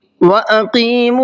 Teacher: قاف کو منہ بھر کے پڑھنا ہے